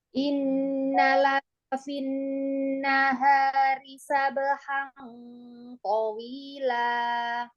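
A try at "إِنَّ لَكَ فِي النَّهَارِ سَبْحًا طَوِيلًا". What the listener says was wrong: Nun tasydid, gunahnya tingkatan gunah apa? Pendek banget, kurang banget. Ayo, sempurnakan. Guna pada nun tasydid, mim tasydid itu masuk ke guna akmal. Jadi dia paling sempurna.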